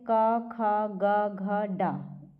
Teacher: क वर्ग में जितने भी आते हैं सब कंठ से उच्चारण होता है उसका